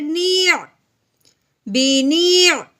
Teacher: اب یہ عین ساکن ہے جس کا مطلب ہے کہ نون کو ہم نے اب عین کے ساتھ ملانا ہے، عین کی آواز نکالتے ہوئے